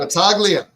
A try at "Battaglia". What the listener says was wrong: No, the G is silent. The G is silent. Battaglia.